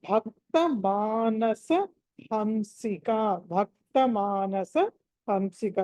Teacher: దీంట్లో భ అన్నది మహా ప్రాణం